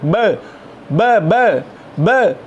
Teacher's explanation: Bilabial plosive sound, b.